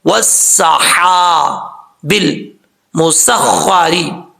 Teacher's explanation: سین سیٹی کے ساتھ پڑھا جائے گا، سین کے بعد جو ہا ہے وہ بریک ہے